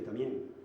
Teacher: la MB se convierte en M